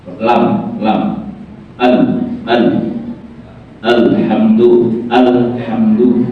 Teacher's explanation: huruf ini keluar dari ujung lidah yang menyentuh gusi atas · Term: huruf lisaniah